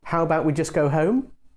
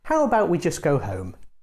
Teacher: the suggestion with the rising tone sounds more like a real question because it sounds more indirect and hesitant the suggestion with a falling tone doesn't sound so much like a question it sounds more confident and direct this brings us to our